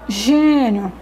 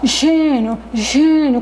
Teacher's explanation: como se fosse pelo nariz, é o som fechado, né? Então, é o acento circunflexo que dá esse som fechado na sílaba da palavra.